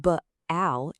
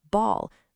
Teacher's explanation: But now, look at AL. The A sound just completely transforms into an ah sound. It's not b-al, it's b plus all, ball.